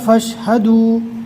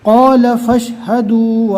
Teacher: فا کو ڈائریکٹ شین سے ملانا ہے، الف کو نہیں پڑھنا